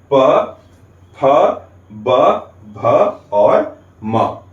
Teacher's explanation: अंदर से आती हुई वायु ओष्ठ अर्थात होठों को स्पर्श करते हुए बाहर निकलती है · जब भी आप प, फ, ब, भ, म का उच्चारण करते हैं तो क्या होता है कि इनका उच्चारण करते समय हमारे होठ बंद हो जाते हैं